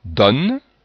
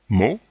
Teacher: ici deux prononciations pour le son o le O ouvert donne le O fermé